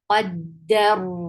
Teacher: When you will stop, you will give sukoon at the end. And this ra will stay heavy. Why? Because ra with sukoon, if you find any ra with sukoon, you will check the letter before it.